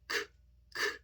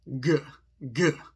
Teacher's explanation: K is unvoiced, k, k. G is voiced, g, g.